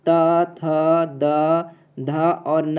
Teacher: दांत से निकलने वाले व्यंजन